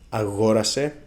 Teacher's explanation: Λοιπόν, before we start checking the word endings, it's very important to say that the stress on the simple past moves one syllable to the left